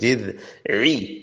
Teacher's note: ऐन बरीक है. कुछ बच्चे ना इसको रुई पढ़ते हैं, रुई नहीं है, बरीक है